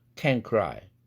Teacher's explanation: 그렇게 되면 조음위치 동화 현상이 또 일어나는 것이고 그래서 크라는 연국의 음 영향 때문에 앞에 있는 은 사운드가 응이라는 연국의 음으로 바뀝니다.